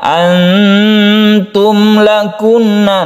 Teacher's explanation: Antum ini adalah ikhfa hakiki, kita dengungkan ikhfa supaya samarnya itu sempurna, ikhfa'nya sempurna.